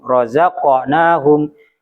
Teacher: jadi efek apa pantulan suaranya bukan ke arah e tapi ke arah o. Razaqnahum bukan rozaknahum.